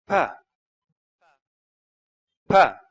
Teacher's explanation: pa is produced by completely blocking the airflow at the level of the lips and by suddenly releasing the air with an explosion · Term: stop